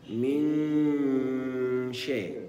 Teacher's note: مدغمه في الحرف الذي بعدها فهي تدخل في الحرف الذي بعدها وينطق حرفا واحدا مع بقاء غنه النون